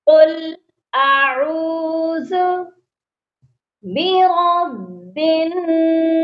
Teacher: نون مشدد ہے اس پر غنہ کیا جائے گا، را کو موٹا پڑھنا ہے۔